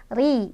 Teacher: Khairul bari. Ri-nya dibaca secara tarqiq atau tipis karena ro-nya barisnya di bawah atau kasrah ya, ditipiskan.